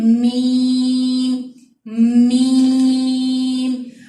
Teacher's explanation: آپ کے آواز جو ہے وہ ناک میں جا کر اس کی غنہ ہوگی